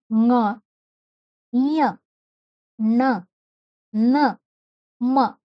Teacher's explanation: ನಾಸಿಕ ಅಂದ್ರೆ ಮೂಗು. ಮೂಗಿನ ಸಹಾಯದಿಂದ ಉಚ್ಚರಿಸಲ್ಪಡ್ತವೆ ಇವೆಲ್ಲ. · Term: ಅನುನಾಸಿಕ